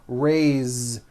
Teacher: even though it is spelled with an s, it's pronounced with a voiced Z